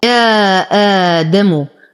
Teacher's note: اتصل رسما لكنه منفصل حكما، إذن هو مد منفصل حكمي يمد بالإشباع 6 حركات للإمام ورش · لدينا أيضا بنفس الكلمة حرف مد وقبله همز فهو مد بدل، له 3 أوجه لورش